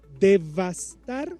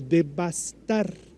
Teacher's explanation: lo estoy diciendo con la V labiodental